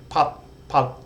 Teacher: English there's a t at the end p with the T we don't release that air at the end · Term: unreleased t